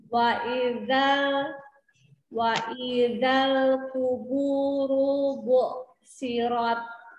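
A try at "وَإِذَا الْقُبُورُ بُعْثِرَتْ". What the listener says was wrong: Sempurnakan dhammahnya. Kubu, jadi dia ku keluarkan sampai ada huruf u-nya. Terus ro-nya mau ditebalkan. Ru, karena dia berharokat dhammah di situ.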